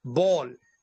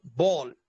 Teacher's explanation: اس کے اندر ہونٹوں کی رکاوٹ ہے